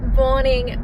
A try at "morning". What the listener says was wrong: There's no B in morning.